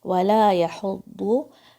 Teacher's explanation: وَلَا يَحُضُّ، یا کے اوپر فتحہ ہے، ہا کے اوپر ضمہ ہے، حلق کے درمیان سے آواز آئے گی ہا کی